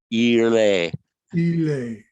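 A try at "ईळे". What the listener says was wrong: Ah, but it's not a L. You got to bend your tongue backwards a bit. Like the Peter Sellers, you got to do the same with an L. Irle.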